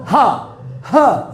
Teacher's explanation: मुख गुहा खुली रहती है और वायु कंठ को खोलकर झटके से बाहर आती है, जैसे बोलो हा ह, तो पूरा मुंह इधर मुख गुहा ये वाला पोर्शन होता है खुला रहता है, इसलिए उसको बोलते हैं काकल, केवल एक ही अक्षर है हा।